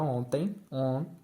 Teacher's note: Dígrafo vocálico ou nasal prevalece o som da vogal nasal. Por exemplo, a palavra ontem, on, pronuncia o O nasal.